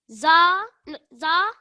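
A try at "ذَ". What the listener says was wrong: Again, pronunciation of this letter, you need to touch your tongue to your top teeth. So you say the, So not a plain za, it's a the.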